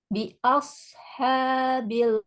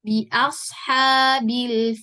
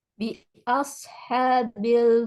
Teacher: tapi ak ya kemudian satu lagi huruf shadnya ya jangan lupa mengangkat pangkal lidah gitu sehingga shadnya jadi tebal sesuai dengan sifatnya